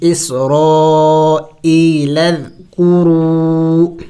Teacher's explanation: واو مد ہے، رو کھینچیں گے، اس الف کو نہیں پڑھیں گے